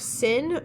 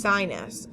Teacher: sin is the I sound, whereas sinus is the long I sound because it's at the end of the first syllable